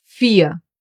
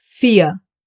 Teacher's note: the silent R, the one that gets pronounced like a reduced A and is found in words ending in ER.